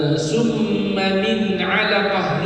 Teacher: Summa min alaqah, nun bertemu dengan ain, izhar, jelas. Tak dengung bukan min alaqah, min alaqah, clear, zahir, maaf zahir batin, yang nampak clear.